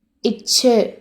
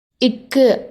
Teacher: இச்சு அப்படின்னு சொல்கிறப்ப காற்று வெடிச்சு வாய் வழியாக வெளியேறும். இது வெடிப்பொலி.